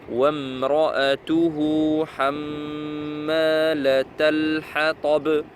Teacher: Mim avec shadda, on reste un petit peu plus longtemps comme noun.